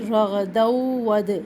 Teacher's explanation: तनवीन के बाद वाव है, दोनों को मर्ज करेंगे, इदगाम का कायदा है